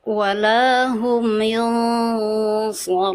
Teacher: itu ditebalkan. Ya, ditebalkan nun sukun bertemu dengan huruf shad kan dengan tebal